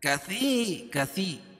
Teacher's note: یا ساکن سے پہلے زیر ہے تو یا مدہ، اس کو 1 الف کے برابر کھینچ کے پڑھیں گے